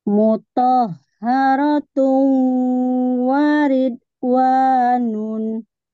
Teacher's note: U-nya ditahan, didengungkan, dengung.